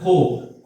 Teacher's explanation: খো টা যখন উচ্চারণ করতেছি ঠোঁটটা গোল হচ্ছে খো যখন উচ্চারণ করতেছে কি হচ্ছে ঠোঁট গোল হচ্ছে তারপরে ত্র